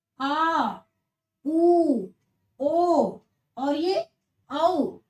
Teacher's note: अब हम देखते हैं पश्च स्वर, तो पश्च स्वर में जो जीभ का पीछे वाला भाग होता है वो थोड़ा सा उठा होता है